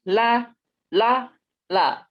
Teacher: ujung lidah nempel di langit-langit bukan di langit-langit apa di gigi seri atas tapi bagian dalam jadi lebih dekat ke gusi eh ya lebih dekat ke gusi bukan di sini jangan ditepuk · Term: huruf lam